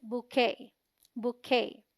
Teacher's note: BOU sounds like boo, rhyming with shoe. QUET is the stressed syllable and sounds like K, rhyming with day. T is silent.